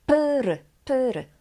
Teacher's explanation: the beginning we have voiceless P P and sonant R but the P doesn't become voiced doesn't become B